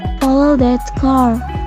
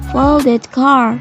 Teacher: Car is the focus word in the following sentence. It must be emphasized so that the hearer can notice easily.